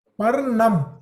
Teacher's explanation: The tongue is folded touching the roof. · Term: Murda